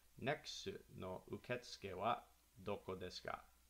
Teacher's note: with a rising intonation to indicate that it's a question